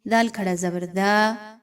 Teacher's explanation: دال کو نرمی کے ساتھ الف مدہ کو 1 سے 2 الف کے برابر لمبا کرتے ہوئے پڑھیے۔